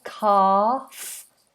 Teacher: So we have a silent L in calf. We just have an open vowel